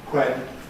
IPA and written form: hwen (when)